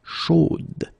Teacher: So here you pronounce the final D, whereas in the masculine form you don't pronounce it.